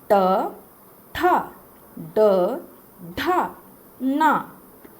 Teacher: अपनी जीभ को घुमाकर ऊपर के तालु में सटाते हैं तो वो उच्चारण में मूर्धा कहलाता है। वो जब इस तरह से हम लोग करते हैं तो वो मूर्धा कहलाता है।